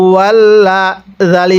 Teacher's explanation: এই জালের মধ্যে আমরা তিন আলিফ টান দিব। কারণ মদের হরফের উপর এরকম চিকন চিহ্ন।